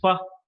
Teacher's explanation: when the upper teeth touch the lower lip we get a labiodental sound sounds like fur but the upper teeth and the lower lip